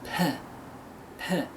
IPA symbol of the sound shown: p